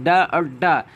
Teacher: जीभ की नोक उलटकर तालू को कुछ देर तक छूकर मुख द्वार को झटके से खोलते हैं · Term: उत्क्षिप्त